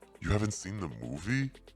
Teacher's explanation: you can use Rising intonation to show surprise